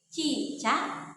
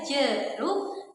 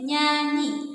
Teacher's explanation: lidah bagian tengah sebagai artikulator aktif bertemu dengan langit-langit keras sebagai titik artikulasi atau artikulator fasif. Nah, bunyi yang dihasilkan adalah bunyi ce. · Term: mediopalatal